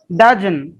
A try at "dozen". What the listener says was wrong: তাও হচ্ছে না, তাও হচ্ছে না। এটা কি জ? এটা তো জ বলছেন, যত না, এটা জ। আমি বলি একটু শোনেন, ডাজন।